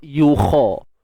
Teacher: Untuk huruf kha sekali lagi kita tebalkan sebutan dia